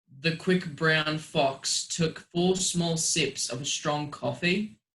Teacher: your punch words would be like brown fox and then sips and then coffee